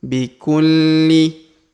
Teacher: huruf Li berharakat tasdid maka kita tahan dan kita tekan